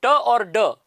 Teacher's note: एक तो ट और एक ड, ये एल्वियोलर प्लोजिव्स कहलाते हैं